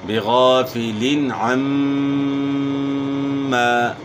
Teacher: میم مشدد میں ہمیشہ غنہ ہوتا ہے